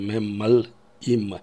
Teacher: Мы слышим, как будто бы там пауза, как будто бы твердый знак, если мы транскрипцию напишем.